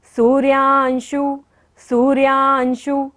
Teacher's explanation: सू पे बड़े ऊ की मात्रा है इसलिए लंबा लेंगे सू को